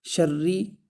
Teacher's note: را کو سختی سے پڑھیں گے اس لیے کہ اس کے اوپر تشدید ہے